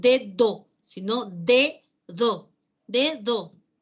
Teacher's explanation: En inicio se mantiene el sonido oclusivo dental, pero en interior de palabra, entre vocales, ese sonido oclusivo dental sonoro se debilita, deja de ser oclusivo y se convierte en fricativo.